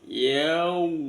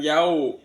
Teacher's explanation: Lin itu lunak. Yau disempurnakan sampai mencucu ya bunyi wawunya. Yau bukan yau. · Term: bacaan matlin